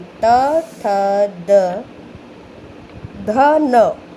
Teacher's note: तवर्ग का उच्चारण स्थान दंत है, यानी त, थ, द, ध, न, इनका उच्चारण स्थान दंत है।